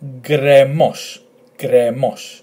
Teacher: Because the tone is in the letter 'o', 'omicron' it's this particular syllable that is going to get the emphasis.